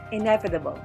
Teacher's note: E, first syllable, ne, second syllable, v, third syllable, ta, fourth syllable, bo, fifth syllable. The stress is in ne, second syllable